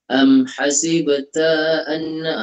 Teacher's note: ta tu pendek je Ibu, jangan terlalu panjang-panjang